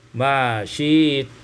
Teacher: Pada ayat yang ke-15 ma syi'tum, ibdalul hamzati ya'an, ditukar hamzah dengan ya, sehingga kita baca ma syi't.